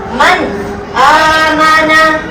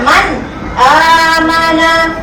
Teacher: nun mati tu kita baca secara jelas. Kita tak baca macam tadi kita baca wa mayya. Kan dia bunyi may. Tu bunyi dengung. Yang ni kita tak ada dengung. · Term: izhar halqi